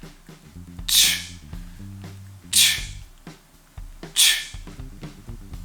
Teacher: The gap between your tongue and the hard palate creates the friction for this sound. Finally, to get ch, you bring t and sh together. You slowly take your tongue off the top of your mouth